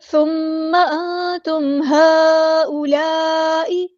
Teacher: یہ مد متصل کنیکٹڈ مد ہے، بڑی مد ہے